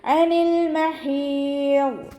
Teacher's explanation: അയിനിൻ്റെ sound തൊണ്ടയുടെ മധ്യഭാഗത്ത് തന്നെ കൊണ്ടുവരിക. ഹംസയുടെ സൗണ്ടായി പോവാതെ നോക്കുക. · ഹ എന്നുള്ള അക്ഷരത്തിൻ്റെ സൗണ്ടിന് തൊണ്ടയുടെ മധ്യഭാഗം വസത്തുൽ ഹൽഖ് തന്നെയാണ് മഖ്റജ് വരുന്നത്. ഹ എന്നുള്ള സൗണ്ട് തന്നെ കൊടുക്കാൻ ശ്രദ്ധിക്കുക കേട്ടോ.